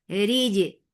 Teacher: Jim will get sifa of qalqala. Jim is majhura letter, so make sure there should not be any escape of breath here.